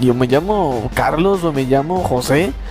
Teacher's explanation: de esta manera de hablar suena como si siempre la persona estuviera preguntando algo